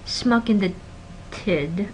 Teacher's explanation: what to notice here is that this T aspiration happens